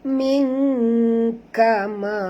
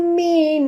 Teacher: nun mati bertemu kaf. Kita kena masukkan, sorokkan bunyi nun ke dalam kaf. Jadi kalau di eja Melayu kan jadi ming, M-I-N-G, ming ya.